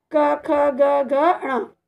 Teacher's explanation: ये कंठ से यानी गले से बोले जाएंगे,